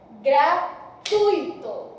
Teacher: a sílaba tônica, a sílaba forte é no tui. Logo, é uma paroxítona.